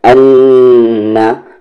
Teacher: पहले में गुन्ना और दूसरे में जब नून को पढ़ेंगे तो फौरन और साफ साफ। अन्ना याद क्या रखनी है आपको कि जब नून पर तशदीद आए या मीम पर तशदीद आए तो वहाँ पर गुन्ना करेंगे, आवाज़ को नाक में थोड़ी देर रखेंगे।